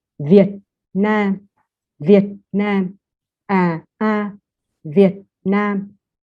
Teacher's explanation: see that when you pronounce the word Vietnam, the you in English it is kind of two first tone a ma ma. But for the word Viet, it is the heavy tone in Vietnamese, so it is lower · Lower and then higher.